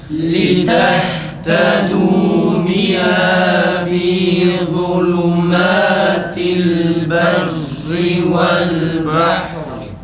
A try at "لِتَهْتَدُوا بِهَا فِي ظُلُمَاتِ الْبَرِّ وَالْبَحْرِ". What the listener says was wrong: Fi harfi fi şeklinde çıkıyor arkadaşlar. Ü çıkıyor. Fi zulme fi zulmatil dudağı azıcık normal halindekine oranla biraz geriye çektiğimiz zaman i harfi tam çıkar. Ya çıkacak şekilde. Fi zulmatil bir de za'dan sonra lamın ötüresi tam çıkmıyor. Lam garip bir şekilde çıkıyor.